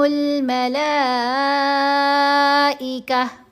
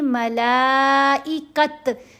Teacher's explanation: اگر اس کے اوپر وقف آ جائے، جیسے کہ یہاں آیا، تو یہ جو تا کی آواز ہے یہ ہا ساکن کی آواز میں بدلی جاتی ہے. یہاں ہم نے ملائکت نہیں پڑھنا، تا کی آواز ہا ساکن میں بدلی جائے گی. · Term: تمربطہ تا